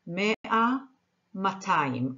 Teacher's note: most modern Hebrew speakers say matayim. The aleph is written but not pronounced.